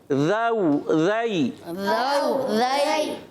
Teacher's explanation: زبان کا سرا اوپر اٹھا کے سامنے والے اوپر کے دانتوں کناروں میں لگائیں گے تو ادا ہوگا ذال